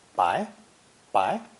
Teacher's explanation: a grain of rice, pronounced with a rising second tone